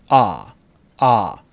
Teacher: ah is very open and very far back